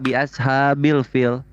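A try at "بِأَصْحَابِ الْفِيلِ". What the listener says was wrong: Salah huruf ha dan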